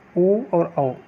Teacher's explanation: ये जो स्वर है यह बनते हैं कंठ और ओष्ठ के आधार पर, इन्हें कहा जाता कंठोष्ठ